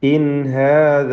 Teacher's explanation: സാക്കിന നൂൻ ഇൽഹാർ ഹൽഖി മണിക്കാതെ വെളിവാക്കുക.